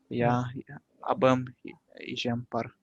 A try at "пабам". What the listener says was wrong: Я мина пабампар, эжемпар. Ну, в народе как бы это диалектное абэм, сагайцы так говорят абэм, но литературное произношение пабэм. Хотя, конечно, вот в жизни говорят абэм, да.